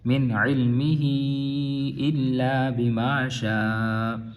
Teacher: یہاں پہ اظہار ہوگا نون ساکن کا کیونکہ آگے حروف حلقی آ رہا ہے